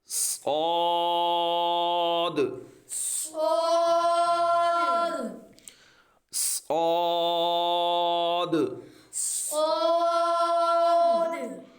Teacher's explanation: شین، شین، صاد، صاد، صاد جو ہے اس کو پر پڑھنا ہے کیونکہ یہ حروف مستعلیہ میں بھی ہے اور حروف صفیریہ ہے، زبان کی نوک اور دونوں دانتوں کے اندرونی کناروں سے یہ ادا ہوتا ہے، اس کو پر بھی پڑھنا ہے۔